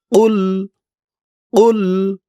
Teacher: এই কফের আওয়াজটা গলার ভিতর থেকে শক্ত হয়ে বের হবে। আওয়াজটা একটু ধাক্কা খাবে।